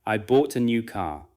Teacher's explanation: The important words are bought, new, and car. Tap gently with your finger on those words if that helps you feel the rhythm.